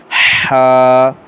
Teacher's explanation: ہا کو گلے سے سانس کے ساتھ